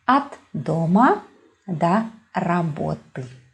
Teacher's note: prepositions are never stressed. That is why when you see о in a preposition, we normally pronounce it as а.